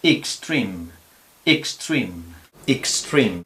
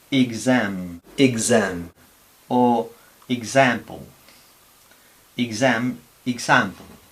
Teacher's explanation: cuando tenemos a la X entre vocales, intervocálica, entonces no es este sonido, sino este sonido. Es una G con una S sonora